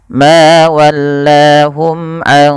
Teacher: dengan menyamarkan suara nunnya kepada huruf qaf. Karena huruf qaf agak jauh ya daripada makhraj huruf nun. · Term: ikhfa hakiki